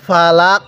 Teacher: ওয়াকফ করলে ফালাক শব্দটা ফালাক কিন্তু লামের মধ্যে টান দিব না কফের নিচে এই জেরকে বাদ দিব লামের মধ্যে টান দিব না · উচ্চারণের সময় গলার মধ্যে হালকা ধাক্কা দিয়ে পড়বেন কারণ কফটা হলো কলকলার